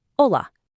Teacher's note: the letter H at the very beginning of hola is completely silent. It's just pronounced hola.